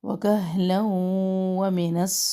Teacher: لام دو زبر تنوین کے بعد واو، یہاں پہ ادغام مع غنہ کر رہے ہیں